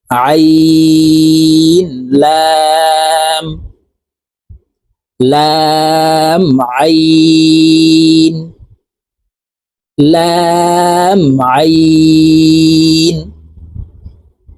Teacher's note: আইন হলকের মধ্যখান থেকে চাপ দিয়ে উচ্চারণ করতে হবে